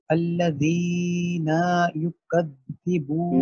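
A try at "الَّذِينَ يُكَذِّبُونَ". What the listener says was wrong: نہیں، یہ ایک تو جو یا مد ہے نا وہ آپ نے زیادہ لمبی کر دی 2 حرکت سے، دوسرا آپ نے نون کی جو 1 حرکت ہے اس کو 2 کر دیا ہے. تو یہ ہونا چاہیے الذین.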